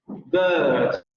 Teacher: la lengua sigue relajada como en el sonido schwa, solamente que aquí sí se nota más el levantamiento, un ligero levantamiento hacia atrás, y tiene la misma posición que el sonido schwa, lo que permite que el aire salga de manera fluida.